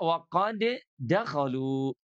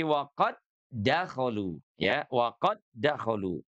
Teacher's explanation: waqad dakolu tidak dibaca qalqalah